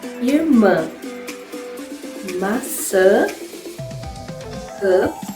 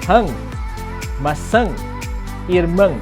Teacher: Sounds almost like the English word hung, which has a little bit of a nasal sound too, only that you have to say it faster and you have to make the nasal sound a lot stronger. You can do this by pushing up some of the air up through your nose.